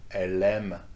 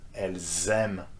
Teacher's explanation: you make the distinction with the liaison, with the Z sound in between